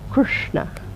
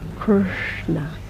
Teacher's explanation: it's pronounced with the tongue pointing towards the roof of the mouth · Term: retroflex position